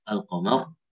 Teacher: Al-qamar di sini nggak ada tengahnya sukun jadi tebal al-qamar.